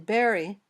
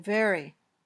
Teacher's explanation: when you say both your lips touch and then pop open this sound is voiced · your top teeth touch your bottom lip then air comes out gently there's no popping motion